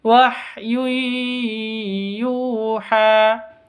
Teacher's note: Tanwin bertemu dengan ya, cara bacanya masuk ke ya disertai dengan dengung.